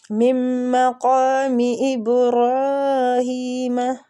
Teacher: میم مشددہ غنہ کریں گے، قاف مستعلیہ پر پڑھیں گے۔ ابرا با پہ کلکلا اور را کھڑی زبر کی وجہ سے کھینچیں گے۔